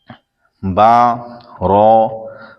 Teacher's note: با دونوں ہونٹوں کے تر حصے سے ادا ہوتا ہے اور را زبان کا کنارہ دانتوں کی جڑ کی تالو کی جانب سے ادا ہوتا ہے، یا پھر نئے مدنی قاعدے کا جو لکھا ہوا ہے اس میں یہ ہے زبان کی نوک اور مقابل کے تالو سے ادا ہوتا ہے۔